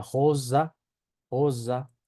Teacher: La R se pronuncia como una J, con la punta de la lengua en la parte baja de los dientes inferiores posteriores.